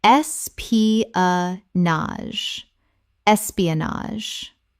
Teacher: Correct pronunciation, es-pi-a-nage. Four syllables with the final GE making a z sound.